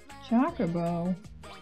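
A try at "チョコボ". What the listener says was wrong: He's not Chocobo. It's choke. As in, I'm going to choke you to death.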